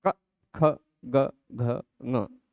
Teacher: कवर्ग का उच्चारण स्थान जिह्वा मूल हो सकता है। क, ख, ग, घ, ङ बोलते हैं तो कंठ जो है यह जगह है, और जिह्वा मूल मतलब जीभ की जड़।